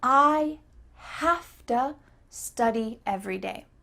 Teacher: the v changes to an f but this is just because that's what it sounds like